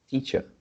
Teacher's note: the second part is softer, and the first part is louder